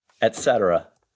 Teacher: I hear it set and then ruh. So I hear the R as part of the last syllable.